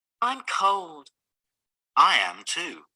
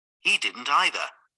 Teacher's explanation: in these sentences the stress is on I and he not on two or either